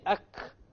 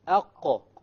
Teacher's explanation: So if you make a mistake and you say ak, which is a kaf, you know that your tongue is hitting the hard palate, which is a mistake. It's supposed to hit the soft palate.